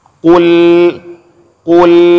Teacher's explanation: Qul tebal. Itu qaf tebal, sedangkan lam itu tipis.